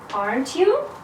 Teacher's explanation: when i'm not sure in what i say and i need your answer i use rising intonation aren't you so the intonation is rising my voice goes up